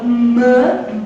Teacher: O ar fica preso dentro da nossa boca por uma obstrução completa só que quando é liberado é liberado pela cavidade nasal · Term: nasal labial